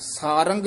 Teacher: ਆਮ ਕਈ ਸਾਰੰਗ ਕਹਿ ਜਾਂਦੇ ਨੇ ਗਗਾ ਛੱਡ ਦਿੰਦੇ ਨੇ ਗਗਾ ਵੀ ਉਚਾਰਨ ਕਰਨਾ